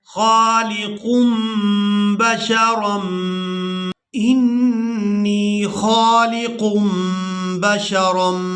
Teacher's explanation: تنوین کے بعد با آ گئی ہے تو یہاں ہم نے نون کی آواز کو میم کے ساتھ بدل کر ادا کرنا ہے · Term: انقلاب